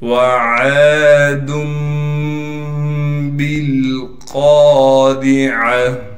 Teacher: ہم نے پڑھنا تو ایسے تھا عادن، لیکن اقلاب کے قاعدے سے، یعنی تنوین کو ہم نے میم سے بدل کر پڑھنا ہے